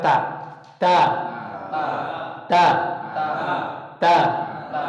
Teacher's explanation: asalnya bukan di langit-langit tapi di ujung lidah bertemu dengan pangkal gigi seri tempelkan ujung lidah juga ditempelnya jangan disebutkan dulu tempelkan saya akan